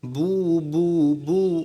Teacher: আবার যখন পেশ পড়বেন তো ঠোঁট গোল করে আওয়াজকে সামনের দিকে দিয়ে দিতে হবে বু বু বু ঠোঁট কিন্তু গোল হবে বু বু বু বু